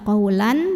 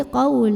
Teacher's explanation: ikhfa ausat karena ada tanwin fathah yang bertemu dengan huruf Sin maka tanwin fathahnya ini dibunyikan samar-samar menuju huruf Sin